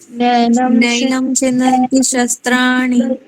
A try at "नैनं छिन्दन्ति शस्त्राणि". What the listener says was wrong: अभी देखिए, नैनम नहीं बोलना है, म का उच्चारण नहीं करना है। च छ ज झ य आता है लास्ट में। देखिए छ जो व्यंजन है वो च वर्ग का है, और इस वर्ग का अनुनासिक क्या आता है लास्ट में? य।